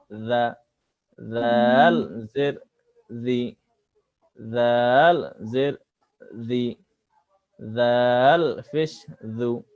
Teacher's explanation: জাল অক্ষর নরম ভাবে পড়তে হয়, কোনোভাবে জাল এ শীষ উচ্চারিত যেন না হয়। যেমন জাল জবর জা, জাল জবর জা, জাল জের জি, জাল জের জি, জাল পেশ জু, জাল পেশ জু, এভাবে।